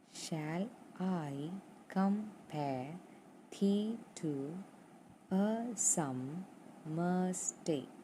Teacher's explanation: So, unstressed, stressed, unstressed, stress, unstressed, stressed, unstressed, stressed, unstressed, stressed, like that. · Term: iambic pentameter